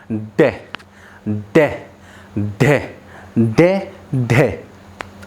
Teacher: आप इसे बोलकर देखिए अच्छे से, हमारी जीभ हमारे मूर्धन्य से टकराएगी और एकदम से नीचे आ जाएगी।